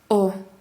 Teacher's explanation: буква О во всех татарских словах произносится о данный звук похож на русскую о но произносится короче